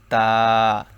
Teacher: এই তা হচ্ছে জিহ্বার আগা সামনের উপরের দুই দাঁতের গোড়ার সঙ্গে লাগিয়ে উচ্চারণ করতে হবে যেমন তা জিহ্বার আগা সামনের উপরের দুই দাঁতের গোড়ার সঙ্গে লাগিয়ে